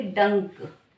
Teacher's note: जब हम बोलेंगे डंक, अभी आपकी नाक में थोड़ी सी झिंझिन होगी हल्की सी, तो उसी का पता लग रहा है आपको क्या है, हमारा अनुस्वार लगाना है।